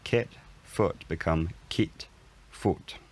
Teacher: the kit and foot vowels raise and become less central to fill these spots